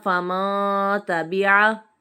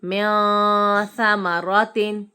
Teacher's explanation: میم نون زیر من ثا زبر ثا میاثا میم زبر ما میاثما را زبر را میاثمرا تا دو زیر تن میاثمراتن. یہاں بھی نون ساکن کے بعد حرف اخفا کا ثا آ رہا ہے تو یہاں پر غنہ کریں گے